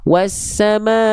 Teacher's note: nggak perlu dipanjang-panjangkan wawunya ya, tapi langsung masuk, dimasukkan ke huruf sinnya. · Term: alif lam syamsiah